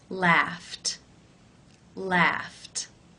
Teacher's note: the final sound in the infinitive is the unvoiced F sound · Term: T sound